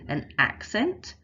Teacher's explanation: the first syllable is stressed and the second syllable isn't